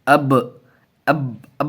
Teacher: اب اب اب نہیں، دبا نہیں دیں گے، تھوڑا قلقلہ بھی ہونا چاہیے۔ اب اس کو قلقلہ بولتے ہیں۔